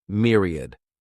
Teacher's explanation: This word has 3 syllables, and the stress is on that first syllable. Mere sounds like mere, myriad.